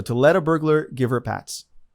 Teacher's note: the reporter drops the H there from the word her instead of give her is Giver all connected there's a reason